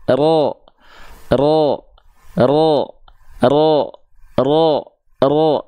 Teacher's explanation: ro Enggak karena dia punya sifat yang namanya takrir War wririnil jadi dia bergetar tapi sedikit Ya tapi walaupun sedikit tetap tegas lugas jelas